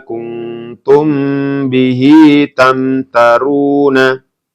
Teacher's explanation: ini mim sukun bertemu dengan ba maka dibaca mendengung juga kenapa karena Ikfa Syafawi